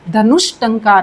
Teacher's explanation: विसर्ग के सामने मूर्धन्य अघोष व्यंजन ट आ जाता है तो जो विसर्ग है वह किस में परिवर्तित हो जाएगी? मूर्धन्य श में परिवर्तित हो जाएगी।